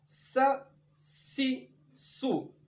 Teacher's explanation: یہ حروف سیٹی کی آواز کے ساتھ ادا ہوتے ہیں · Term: حروف صفیریہ